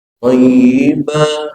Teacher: Karena matali kita melihat jelas di sini adanya tanwin thayyiban. Tapi kuping kita tidak mendengar suara thayyiban, suara tanwin, tapi yang terdengar suara panjang thayyiba, maka mad itu disebut mad iwad.